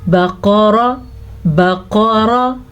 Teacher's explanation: را کو پر پڑھنا ہے، را کے اوپر زبر کی وجہ سے. قاف کو پر پڑھنا ہے، قاف اپنے 6 ساتھیوں کے سمیت ہمیشہ ہی پر پڑھا جاتا ہے.